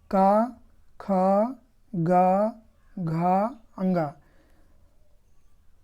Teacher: कंठ से करते का वर्ग के जितने भी वर्ण है पांचों का ख ग घ अंग ये कु वर्ग में आते हैं कवर्ग में इनका उच्चारण स्थान क्या है कंठ है